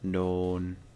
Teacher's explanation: It's a mid-tone and a o sound.